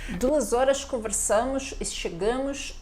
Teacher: perceba o S final, né, bem chiado, mais próximo do chiado, do S chiado aqui do carioca no Brasil